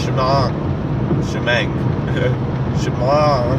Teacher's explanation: But if you were to pronounce the ayin properly, when it comes at the end of the word with a pasach, like the word shema, the pronunciation of the ayin comes after the vowel, not before the vowel